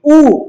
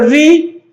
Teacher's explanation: एक तो री का उच्चारण करो, री ऊ हुई ना? ऊ में गोल हो रही है, री में गोल नहीं हो रही है